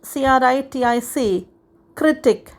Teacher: has the stress on the first syllable